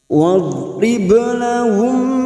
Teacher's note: huruf ba sukun yang mati asli di tengah kalimat qalqalah sugro, jangan lupa dipantulkan